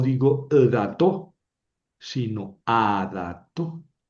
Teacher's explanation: esto en la pronunciación no es un patah, no es una a, es un sheva compuesto